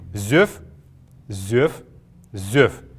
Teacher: Не зёвэ нужно произносить, а именно зёв. Тут неясных гласных нет, и поэтому мы его произносим так, как видим.